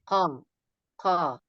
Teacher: Aksol lisan, yaitu pangkal lidah bagian atas bertemu dengan langit-langit lunak. Tempat keluar huruf qaf.